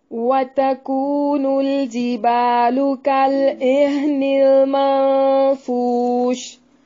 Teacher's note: واو کو ہونٹوں کو گول کر کے ادا کریں گے